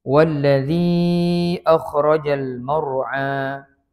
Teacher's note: Bila huruf mad bertemu dengan hamzah berbaris dalam dua perkataan, itu mad jaiz munfasil, kita baca 4 harakat.